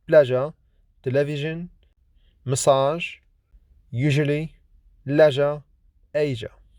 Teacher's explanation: J is voiced, lenis, palato-alveolar, fricative consonant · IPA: /ʒ/